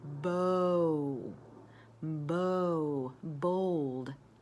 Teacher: when I say the O sound, my lips are going forward and reaching around and coming to a W